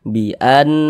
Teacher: berarti Nun bertasydid ini hukumnya gunah musyaddadah karena dia ghunah maka cara membacanya itu diunnahkan jadi suaranya itu kita tahan kita panjangkan sejenak Bian di bagian biannya itu kita tahan kita panjangkan sejenak biannahum